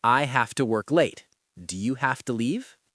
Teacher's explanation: Have to becomes hafta.